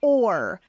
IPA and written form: ɔr (or)